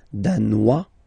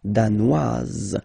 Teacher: Danois, don't pronounce the final S. Danoise, here you pronounce it.